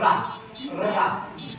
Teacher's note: जैसे देखो बोलते हैं रा, रा जो जीवा है हमारी देखो ऊपर जाती है और उलट जाती है, रा रा तो हिलती रहती है, मतलब प्रकंपित, एक कंपन उत्पन्न हो रहा है जीवा में हमारे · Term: प्रकंपित या लुंठित वर्ण